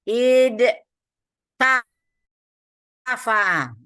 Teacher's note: Jadi ada letupan-letupan di situ. Jadi ada bunyi sebelumnya bunyinya lembut, kemudian datang ta yang keras, maka terjadi letupan id ta. Maka diubah supaya lembut diganti dengan dal menjadi idda.